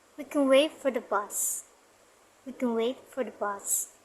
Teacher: Wait and bus pronounced clearly. We can and for the pronounced faintly. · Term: strong and weak form